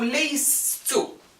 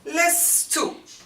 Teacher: the first sukun with its weak letter is obliterated just as with any hollow verb. So we are left with lestu.